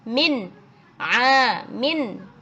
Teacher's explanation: ada nun sukun bertemu dengan Ain ya harus terdengar jelas nunnya